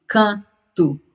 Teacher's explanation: O português mudou tanto, o português brasileiro, a partir de Portugal, com contato com as línguas indígenas, que é possível analisar o português brasileiro como contendo vogais orais. Porque esse N e M que aparece na nossa ortografia, eles não são distintos. Eles são só uma nasalidade.